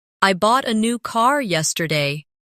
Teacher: The stressed words are bought, new, and car. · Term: sentence stress